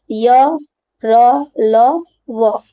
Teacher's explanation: व्यंजन मुंह के भीतर ही रहे उन्हें अंतस्थ व्यंजन कहते हैं उच्चारण के समय जो जीव होता है वह मुह के किसी भाग को स्पर्श नहीं करती · उच्चारण के समय जो जीभ होता है वो मुंह के किसी भाग को स्पर्श नहीं करती है। यानी जब हम अंतस्थ व्यंजन पढ़ते हैं, य ल व जैसे बोलते हैं, तो मुंह के किसी भी भाग को वो छूती नहीं है।